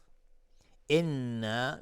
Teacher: نون مشدد دو حرکت غنه میدیم